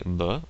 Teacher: You can actually hear when I say b that my vocal cords are working in conjunction with the air that's coming out of my mouth, which is why it's called voiced